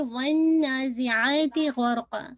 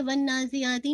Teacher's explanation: وَالنَّازِعَاتِ غَرْقًا، make sure کیجیے گا واؤ ون، ٹھیک ہے، نون پہ آپ نے غنہ کرنا ہے بالکل 2 کاؤنٹ، ٹھیک ہے، یہ نہیں کر کے ون نازیاتی نہیں، ون نازیاتی نہیں ہے، ون پورا نیزل ساؤنڈ میں جانا چاہیے، 2 کاؤنٹ